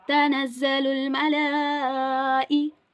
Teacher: Then mim zabar ma, lam khada zabar la, and then we have a mad on its top, and here it's madde muttasil because hamza is in the same word. So we have to stretch it for 3 to 4 counts